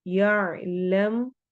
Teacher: इसमें जलाला की लाम को हमने मोटा पढ़ना है और आखिर में हा की आवाज क्लियर होगी